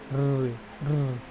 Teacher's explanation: मूर्धा, क्योंकि री, र, री, री, है ना। री बोल रहे हैं तो कहाँ जा रहा है जीभ? दांत के पीछे